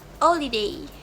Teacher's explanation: The h sound in holiday is elided. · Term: elision